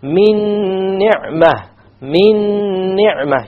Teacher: You have a silent noon, and I did a ghunna as well because there was an idgham.